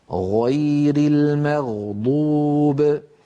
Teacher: فبين جذر اللسان والحنك اللحمي في هذا المكان الذي ترونه يخرج حرف الغين. ولاحظوا بأن المخرج لا ينقفل، لاحظوا بأن المخرج مفتوح.